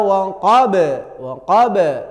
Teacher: Q itu namanya mantul namanya Qalqalah Kubro